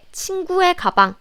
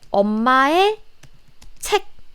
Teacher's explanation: So my friend's bag is 친구의 가방 because 의 here is possessive marking particle. So the pronunciation should be 에.